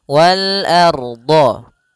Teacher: A tipis, ro-nya tebal.